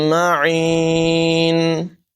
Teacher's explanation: فمن یأتیکم بماء معین، تنوین کے بعد میم ہے، یہاں پر بھی ادغام ہوگا، غنہ کر کے پڑھیں گے